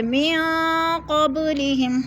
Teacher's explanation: جائیں گے، جیسے من قبلہم، قب پہ قلقلہ ہو رہا ہے، با ساکن حروف قلقلہ میں سے اس کو ہلا کر پڑھیں گے · نون ساکن کے بعد قوف آ گیا تو ادھر اخفاء ہو رہا ہے، غنہ کریں گے، ناک میں آواز لے جائیں گے